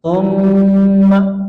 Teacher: Gunnah itu suara yang keluar dari hidung, ya. Ditahan 3 ketukan.